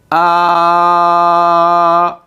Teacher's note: تسكين هذه الحروف واضافه همزه القطع بالحركه المناسبه لكل حرف منها نرى بانها تخرج دون اي تصادم بين اي من اجزاء الفم الالف مثلا ا لاحظ تحس بانه الصوت يخرج من الاوتار من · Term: المخرج المقدر